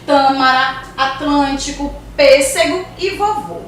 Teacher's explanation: aqui com acento circunflexo já é mais fechado